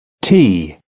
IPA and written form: tiː (tea)